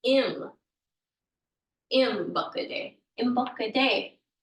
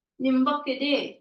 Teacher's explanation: usually the N is the signifier of niin, but you will hear this in some places as im